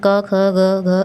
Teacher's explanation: अब इसमें देखते हैं क ख ग घ अंग है। इसको बोलते समय हमें हमारी जो वायु निकलती है उसका प्रेशर गले पे पड़ता है।